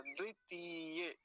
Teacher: तीय त का पर दीर्घ इ का है तो लंबा खींचें थोड़ा सा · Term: दीर्घ ईकार